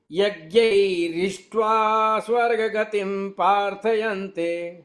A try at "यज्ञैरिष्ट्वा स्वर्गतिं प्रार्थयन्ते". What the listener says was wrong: ये स्वर्ग गतिम नहीं है, स्वर्गतिम है। स्वर्गतिम।